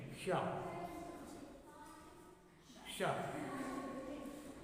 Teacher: ये पेट फटा सा नहीं होता, या साबित पेट वाला सा, ये सही लैंग्वेज नहीं है, ये मूर्धन्य सा है, मूर्धा से हो जाता है, जीभ पीछे करके